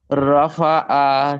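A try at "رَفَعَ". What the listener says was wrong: রফা আতে টান নেই টান দিবে না তাহলে পড়া সুন্দর হয়ে যাবে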